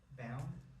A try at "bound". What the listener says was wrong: Bound, good, bound. You pronounced it a little bit more open, bound, which is closer to my original accent, actually. But this one we say more bound, bound.